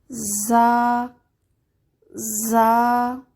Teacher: زا نرم حرف ہے، اس میں سیٹی ہوتی ہے لیکن سیٹی سخت نہیں ہونی چاہیے۔ زبان کی نوک جب نیچے والے 2 دانتوں کے اندرونی حصے پر رکھیں تو اس کی ادائیگی صحیح ہوتی ہے۔